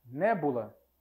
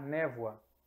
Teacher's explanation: Olhem só, B para V, nós estamos em duas sonoras, mas o B, é uma oclusiva, enquanto V é uma que nós chamamos de fricativa. O B é um som mais abrupto, é um som mais duro. Ele impede a passagem do ar. O V, por mais que ele seja também um som sonoro, ele é mais brando que o V, que o B.